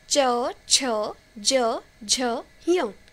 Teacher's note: तो इनके लिए तालु इस्तेमाल होता है, तो ये तालव्य वर्ण है।